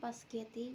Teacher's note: In the variant spaghetti, the position of the s sound is shifted, resulting in a reordering of sound within the word. This process does not involve adding or deleting phonemes, but rather reasoning them to make pronunciation easier. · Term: metasis